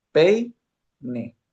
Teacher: en una misma sílaba hay dos vocales, e y la i. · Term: diptongo